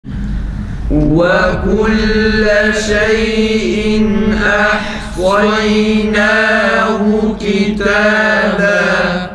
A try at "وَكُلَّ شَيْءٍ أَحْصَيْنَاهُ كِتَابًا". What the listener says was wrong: Bahara biraz daha fazla inceltiyorsunuz arkadaşlar. İmaleye benziyor.